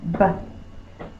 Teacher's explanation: My lips are closed and then I'll pop the air. B. That reminds me the line is first, like my lips are closed, B.